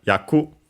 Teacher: yaku, roll, accented on the last syllable